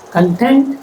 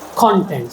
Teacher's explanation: Content, stress on the second syllable, and content, stress on the first syllable.